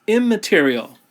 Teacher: in it assimilates so that we have the word immaterial so the n turns into an m assimilating to the first letter of the word